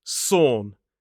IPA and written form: sɔːn (sorn)